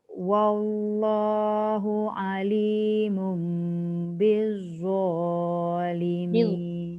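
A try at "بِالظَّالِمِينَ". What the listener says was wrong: punya lidah keluar tak masa sebut billah? Tak boleh, dia kena keluarkan hujung lidah. Kalau tak nanti dia ada sofir, dia ada bunyi sofir. Maksudnya dia macam bunyi zai. Dia tidak ada desiran.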